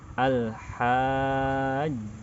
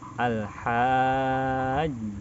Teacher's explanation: ketika jim bertasydid karena dia qalqalah, maka agak ada sedikit jeda.